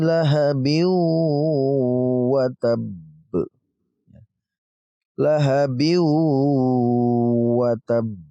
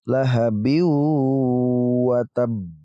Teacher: Lahabiu, langsung ya dari bi ini kita langsung ke wawu karena digabungkan. Ba tanwin ini kita gabungkan ke wawu, huruf wawu ini lalu kita dengungkan.